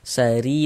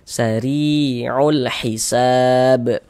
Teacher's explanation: Kalau dia memiliki tanda baca kasrah, harakat kasrah, ya baris satu di bawah huruf harakat kasrah. Huruf ro kalau memiliki harakat kasrah, maka huruf rnya dibaca tipis. Sehingganya lisan kita itu santai, tidak naik terangkat ke atas pangkal lisannya.